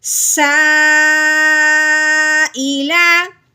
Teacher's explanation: یہ مد کی وجہ سے 3 الف کے برابر لمبا ہوگا، اگر حمزہ کی وجہ سے 4 الف کے برابر لمبا ہوگا.